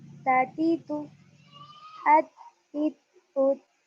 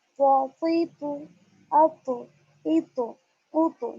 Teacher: ता की बारीक होगी आवाज और इसमें झटका भी नहीं आएगा